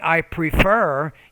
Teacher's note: you need to put more stress on that second syllable